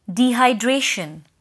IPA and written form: ˌdiːhʌɪˈdreɪʃ(ə)n (DEHYDRATION)